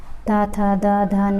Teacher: ये सभी दंत से बोले जाते हैं